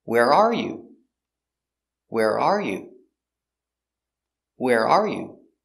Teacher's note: when you ask the question the first time the stress is on are it's the important word